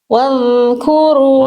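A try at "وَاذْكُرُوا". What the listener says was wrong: Oh, jangan wow. Jangan wow. Wadhkuru. Oke, bunyinya masih kerasa tebal nggak? Soalnya kayak tebal bunyinya teman-teman. Jadi masih kayak gini nih bunyinya. Bunda bedakan antara bunyi relax tuh lidah dalamnya yang saya dengar tadi Bunda gini bacanya itu jadi kayak vo nanti. Jadi kesalahan di sini sebenarnya bukan kesalahan hijau tapi merah warnanya karena terdengarnya jadi kayak huruf gitu bunyinya.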